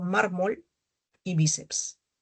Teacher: llevan la mayor fuerza de voz en la penúltima sílaba y contrarias a las agudas.